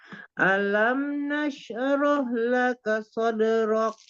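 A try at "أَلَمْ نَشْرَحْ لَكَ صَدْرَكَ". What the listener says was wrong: Jangan dikol-kolkan. Shinnya tafashi. Nasroh. Alamnya jangan dinaikkan. Alam. Hamzahnya jangan naik. Langsung aja ya. Alam nasroh laka sadrak. Sadrak. Sadrak. Nasroh. Tidak nasroh. Nasroh. Ya, tafasi ya. Tafasikan. Dialirkan aja. Nasroh. Nasroh. Nasroh. Alam nasroh laka sadrak.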